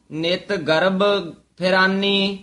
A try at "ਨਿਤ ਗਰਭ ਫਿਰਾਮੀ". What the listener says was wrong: ਫਿਰਾਮੀ ਮਮੇ ਦੇ ਨਾਲ